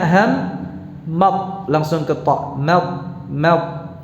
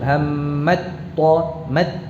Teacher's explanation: Jadi taknya telah melebur ke ta-nya menjadi satu. Jadi dalam pengucapannya ham mad langsung ke ta, mad, ya. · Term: idgham